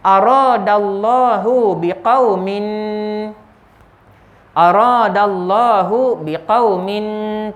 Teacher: Tanwin bertemu dengan sin, ya, ada dengung sebanyak 2 harakat, dan nama hukumnya ikhfa, ya, ikhfa haqiqi, ya, ikhfa haqiqi.